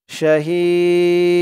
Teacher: জেরের পরে ইয়া সাকিন এক আলিফ টানটা তিন আলিফ টান হয়ে গেছে